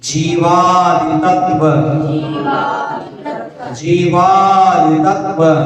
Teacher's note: बोलो जीवादि तत्व, जीवादि तत्व, जी को लंबा खींचो